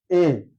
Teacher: যখন এ উচ্চারণ করি তখন হচ্ছে আরেকটু জিহ্বাটা নামে নিচের দিকে, অর্থাৎ এ, অর্থাৎ এটা উচ্চারণ হচ্ছে উচ্চ মধ্য।